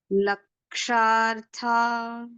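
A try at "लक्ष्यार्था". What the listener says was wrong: It's Ksha plus Ya. It should sound as not Ksha. It is Kshya. Ksha and Ya. So Kshya. Kshya.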